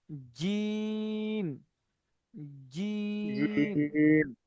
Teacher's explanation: যে, জিম, যে, হা, জিমটা সিটি হা, হবে না, শুনুন, জিমটা আরেকবার পড়ুন, জিম চেপে পড়তে হবে। জিম, জি, জিভের মাঝখান, উপরের তালু, জিম, জিম, জিম, জি, জিম, ওর পরে পড়ুন।